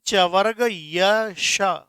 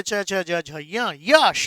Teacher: जब आप इनको बोलेंगे तो जो तालु है ना, उसका स्पर्श होता है जीभ को।